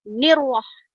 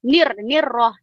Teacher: Sedangkan huruf ra itu hanya sekali getaran sahaja.